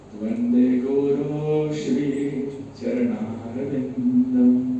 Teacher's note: श्री श आने से विसर्ग के स्थान पर आगे वाले श का आधा, मतलब स्वर से रहित श का उच्चारण करना होता है